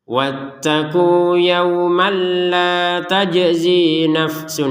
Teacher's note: Tapi kalau digabungkan kepada yang setelahnya maka tidak ada panjang sama sekali, berubah hukum yaitu tanwin bertemu lam, dimasukin tanpa dengung